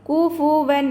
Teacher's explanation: കാഫിനെ ശ്രദ്ധിക്കുക. കുഫു ഫ ലൈറ്റ് ആക്കിയിട്ട് ഉച്ചരിക്കുക. കുഫുവൻ. ഇവിടെ തൻവീൻ ഫതഹയാണ്.